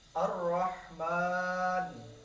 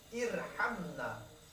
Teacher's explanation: cara mengucapkan adalah dengan menghimpunkan ketebalan suara dengan mulut sehingga menjadi penuh dengan huruf ra. Jadi kita fokus kepada huruf ra ya. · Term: ra tafkhim